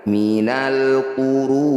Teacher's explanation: Ru panjangkan 6 harokat, huruf terakhir sukunkan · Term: mad arid bisukun